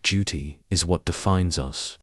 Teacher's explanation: you can practice how she emphasizes the word Duty and slows down for the rest of the sentence